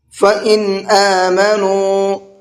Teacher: حمزہ اظہار کے حرفوں میں سے ہے تو یہاں پر نون میں اظہار کر کے پڑھیں گے